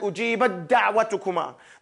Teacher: The ta is not pronounced in this case. So again, the hukm here is idgham.